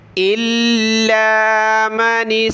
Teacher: لام کو سخت کیا تشدید کی وجہ سے